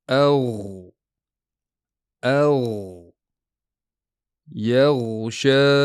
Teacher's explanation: g'oyin tovushi havoni surib chiqarish bilan hosil bo'lmaydi. U aksincha ovoz paychalarining tebranishi bilan yuzaga keladi. Ya'ni bunda ovoz paychalari yopiq bo'ladi. · Chunki g'oyin bu uzluksiz tovush. Ya'ni uni istalgancha cho'zish mumkin.